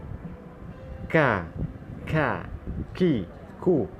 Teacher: Untuk huruf kaf ni, lidah itu dia akan sentuh lelangit yang hadapan sedikit.